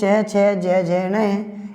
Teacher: ई चय वर्ग ये और से, इन वर्णों का उच्चारण स्थान तालु है, अर्थात जिह्वा इनको तालु पे जाकर के हवा को रोकती है और धीरे धीरे हवा को निकलने देती है